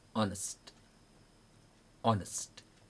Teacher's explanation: when you say honest, your breath will not strike your finger